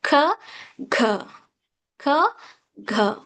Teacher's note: So, tongue touches behind teeth, t, d, t, d. And then, velar sounds back of the tongue, soft palate